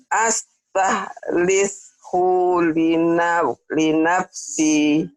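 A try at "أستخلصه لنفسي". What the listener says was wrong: Ya, tapi hu ini pendek. Astakhlishu linafsi. Astakhlishu linafsi. Astakhlishu linafsi. Lishu linafsi. Astakhlishu linafsi.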